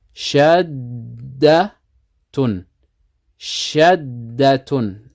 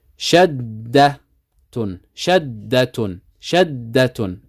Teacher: the shadda means that there's 2 letters of the same kind. The first is sakin, we need to hold it.